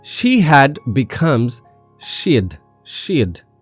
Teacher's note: She had becomes she'd. Here, the H drops.